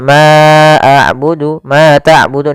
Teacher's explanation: fathah bertemu dengan alif untuk panjang yang kita panjangkan sepanjang dua harakat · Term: Mad thii